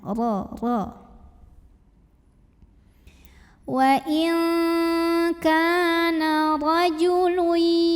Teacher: Karena ro-nya ini barisnya di atas fathah ya. Maka cara bacanya ditebalkan, pangkal lidah kita dinaikkan. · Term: tafkhim